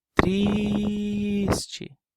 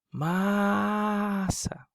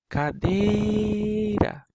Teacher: Todas essas sílabas tônicas estão na penúltima posição. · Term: paroxítonas